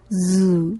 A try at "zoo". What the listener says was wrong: 네, Zoo.